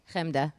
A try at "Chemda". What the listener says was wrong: See, it's different. He puts more of a K.